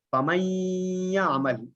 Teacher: اسی طرح فَمَن يَعْمَلْ، یہ لام اور را میں سے نہیں ہے تو اس لیے یہاں تھوڑی سی ناک کی طرف سے آواز موو ہو رہی ہے